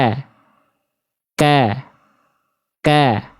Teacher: E-nya itu pangkal lidah naik dulu kan ek. Tapi ketika mengeluarkan vokal A-nya turun pangkal lidahnya.